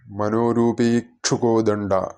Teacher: അപ്പോൾ കോദണ്ഡ എന്ന് തന്നെ കേൾക്കണം. ആ താലവ്യത്തിലേക്ക് നാക്ക് വളച്ചുച്ചരിക്കേണ്ട, പകുതി കണ്ഠം കൊണ്ട് ഉച്ചരിക്കേണ്ട ഒരു അക്ഷരമാണ് ഡ